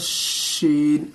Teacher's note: तीन नुक्ते वाले शीन को बिल्कुल सीटी की आवाज में बोलनी है, शीन, इस तरह से।